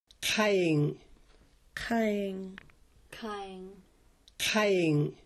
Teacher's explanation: A letter Q in Klallam is similar to the sound at the beginning of the English word call, but the tongue is touching farther back in the throat. It's in the Klallam word for eye. · These sounds are all produced with the tongue pulled extremely far back in the mouth.